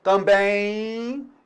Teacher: Note então que o M em final de palavra, ele também pode produzir o som I. Também. Olha esse M aqui anterior, ó. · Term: semivogal